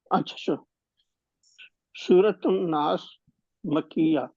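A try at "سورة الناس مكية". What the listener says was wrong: نہیں ناس پہ وقف نہیں کرنا. ناس سین میں زیر لگی ہے وہ ملا کر پڑھیں گے. سورۃ الناسی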